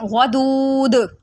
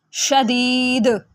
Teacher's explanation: اسی طرح شدید سے شدید، کیونکہ آخری حرف قلقلہ ہے تو اس کو 3 سے 4 الف کے برابر کھینچنے کے ساتھ ساتھ ہم یہاں پر قلقلہ بھی کریں گے